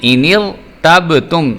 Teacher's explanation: را کو موٹا بھی ہم کر رہے ہیں اور با کا قلقلہ بھی کر رہے ہیں